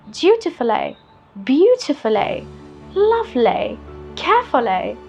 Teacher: Notice how the British say the ly sounds in the end with a more of an ai sound. ai. So dutifully, beautifully, lovely, carefully.